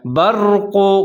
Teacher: را کو موٹا پڑھیں گے کیونکہ اس سے پہلے زبر آ رہا ہے۔ برق قاف کے اوپر پیش ہے، قاف دو نقطے والے، اس کو موٹا پڑھنا ہے۔